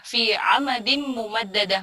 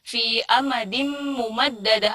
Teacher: Yang harusnya dibacanya ain, malah dibaca hamzah.